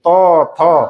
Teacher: জিভটা কোথায় টাচ হচ্ছে? দাঁতে।